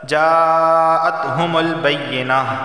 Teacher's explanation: ایک ہی لفظ کے اندر مدہ اور حمزہ دونوں جمع ہو گئے ہیں تو اسے لازمی 4 الف کے برابر کھینچ کر پڑھنا ہے، لازمی۔ جاءتہم البینہ وما امروا، وما کے آخر میں الف مدہ اور امیرو کے شروع میں حمزہ آگے، مد منفصل یا مرضی ہے 2 یا 3 یا 4 الف کے برابر، اسے کھینچ کر آپ اپنی مرضی سے پڑھ سکتے ہیں۔ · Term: مد متصل